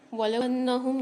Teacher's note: नून पर मुशद्दद है तो यहाँ पर हम गुन्ना करके पढ़ेंगे